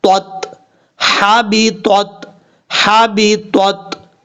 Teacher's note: پہلا جو تا ہے یہ تا حروف مستعلیٰ میں سے ہے، پر پڑھا جائے گا